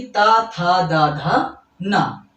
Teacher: त वर्ग यानी कि ता था दा धा ना, इनका उच्चारण होता है दांत से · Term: दंतीय वर्ण